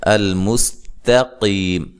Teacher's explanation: تا کو باریک پڑھیں گے. قی یا مدہ ہے، قاف کو موٹا ادا کرنا ہے، اور وقف کی صورت میں مد کر سکتے ہیں.